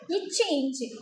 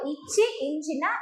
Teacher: இரண்டாவது இச்சு இஞ்சு ஆகிய இரு மெய்களும் எப்படி நமக்கு வரும் அப்படின்னா இடைப்பகுதின்னு வரணும். இச்சு இஞ்சு சொல்லும்போதே நம்ம நாக்கு பாருங்க இடைப்பகுதியில இருக்கும்